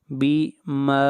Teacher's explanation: میم کو کھینچ کر پڑھیں گے 1 الف کے برابر، یہاں پر الف مدہ ہے۔